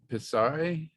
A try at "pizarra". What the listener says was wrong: Very close. Pizarra with an A on the end. Pizarra.